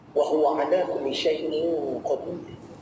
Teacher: itu tanwin bertemu dengan huruf qaf, huruf tinggi, huruf istilah. Dengung dia juga mesti tinggi.